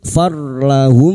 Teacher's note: mim sukun bertemu mim idgham mimi, memasukkan atau mentasdidkan 2 mim masuk pada huruf mim berikutnya disertai mendengung selama 3 harakat